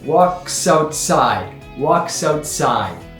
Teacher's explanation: walks outside and they get linked together with that s joining out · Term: liaison